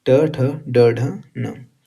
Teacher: तीसरा है ट वर्ग। जिसका उच्चारण स्थान क्या है? तो मूर्धन्य। रूफ ऑफ मौत।